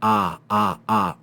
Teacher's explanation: And this long ah makes the sound of ah in father. Notice that the length of the vowel is long.